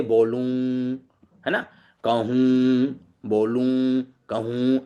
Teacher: अनुनासिक। यह भी नासिका से इसका उच्चारण निकालते हुए होता है। ठीक है। उस समय मुंह से भी कुछ वायु निकलती है